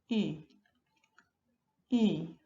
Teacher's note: En este caso es una cerrada anterior redondeada, entonces tenemos que decir la I igual, pero con los labios redondeados